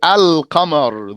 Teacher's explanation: you don't merge the lam into the qaf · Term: Qamari letters